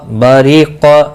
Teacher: با زبر عمیلہ، با زبر با، را زیر ری، باری، قاف زبر قا، باریق، یہاں را باریک پڑھا جائے گا، اور یہاں پر قاف مستعلیہ ہے